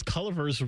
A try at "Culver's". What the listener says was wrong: Why is it color? It's Culver's. There's no I in there.